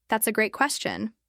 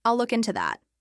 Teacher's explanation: He learned to raise his voice slightly on great or that then bring it down.